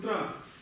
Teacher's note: если мы записываем санскритское слово, мы не произносим его как церебральное, как тибетское ча. Мы произнесем его просто как тра. То, например, в слове мантра это будет тра.